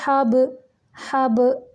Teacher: حبلم، ہا واضح ہوگا اور با قلقلہ ہوگا، حب قلقلہ کا مطلب ہوتا ہے حرکت دینا، یعنی ساکن کرتے ہوئے لفظ کو حرکت دینا